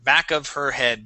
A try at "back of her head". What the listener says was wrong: You're saying here. Okay, go right to that sound. Back of her. Back of her head. Try doing this. Try dropping that H. How about if you say back of her. Back of her head.